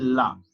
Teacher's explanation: अर्थात वे ध्वनियां जो मध्य भाग में रुककर किनारे से निकलती हैं। जैसे ला, ला के समय हमारी जीभ रोटेट हो जाती है, मुड़ जाती है और लेफ्ट एंड राइट से वायु निकलती है। तो उस समय जो उत्पन्न ध्वनि को पार्श्विक ध्वनि कहते हैं, अर्थात इंग्लिश में लेटरल साउंड कहते हैं।